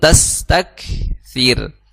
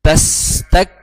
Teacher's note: Kaf di situ, tak di situ memiliki sifat hams. Jadi jangan sampai dihilangkan sifat hams, mengalirnya nafas yang dimiliki oleh huruf kaf. Jadi bacanya tas tak seperti itu.